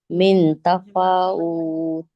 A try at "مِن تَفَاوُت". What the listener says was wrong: من پہ اخفا کریں اور ٹائم لگائیں، من تفاوت